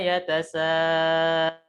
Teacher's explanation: Kemudian yatasa panjang. Di situ panjang 5 harokat. Yatasaalun dinamakan dengan mad wajib muttasil.